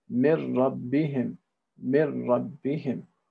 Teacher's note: we're linking the noon and the ra, and we're making the noon disappear. And we're not basically having any residual sound from the noon. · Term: idgham bila ghunna